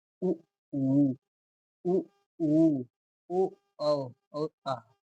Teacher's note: वे स्वर जिनका उच्चारण करते समय ओष्ठ गोल हो जाते हैं, अर्थात वृत्त जैसी आकृति ग्रहण कर लेते हैं, वर्तुल स्वर कहलाते हैं।